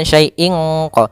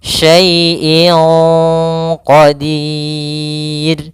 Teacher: Maka menyamarkannya langsung ke huruf q bukan syaiinq. Jangan pakai eng. Tapi dia langsung disamarkan ke huruf qof-nya. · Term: ikhfa